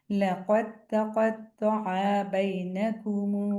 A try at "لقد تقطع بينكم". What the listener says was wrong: فتح کھنچ گئی. تقطع بینکم.